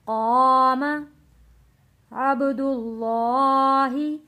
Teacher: با پہ قلقلہ کریں گے کیونکہ با ساکن ہے